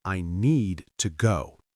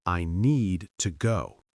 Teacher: The important words are strong, need, go, and the small word to becomes weak.